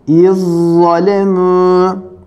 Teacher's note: İkinci grup harfler S, zel, za. Evet, zel okumuyoruz. Za'yı okuyoruz şeddeli olarak. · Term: idgam mütecanisein